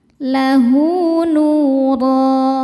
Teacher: Maka hal dhamirnya kita baca panjang 2 harokat. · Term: mad silah qasirah